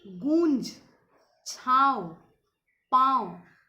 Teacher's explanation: अनुनासिक इसका उच्चारण नाक और गले से होता है